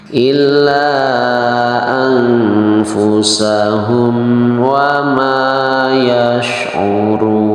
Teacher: Hukum mimnya huruf mimnya dibaca dengan jelas di bibir dengan tidak mendengung ya. Jadi cukup bacanya dibaca dengan jelas. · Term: idhar safawi